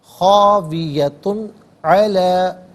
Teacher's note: علی ما انفق، فی علیحدہ ہے، ہا علیحدہ ہے، ملا کر پڑھیں گے، فی ہا، وہی خاویتن، تا پر دو پیش کی تنوین ہے، اس کے بعد عین حرف حلقی ہے، تو یہ تنوین کو اظہار کے ساتھ پڑھیں گے، اخفا یا غنہ نہیں کیا جائے گا